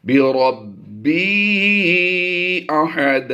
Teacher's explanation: بربی با حروف قلقلہ سے ہے تو یہاں پر ہم نے قلقلہ بھی کرنا ہے جماؤں کے ساتھ، اور یہ قلقلہ کبریٰ کہلاتا ہے.